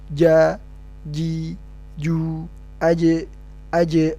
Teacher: Ketiganya adalah huruf jahar yang artinya tidak boleh ada hembusan udara atau nafas yang keluar saat huruf tersebut diucapkan. Udara yang terdorong harus berubah sempurna menjadi suara.